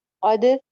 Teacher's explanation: دال پہ کلکلا ہو جائے گا